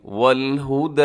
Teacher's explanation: دال کے اوپر کھڑا زبر ہے، اسے تھوڑا کھینچیے گا۔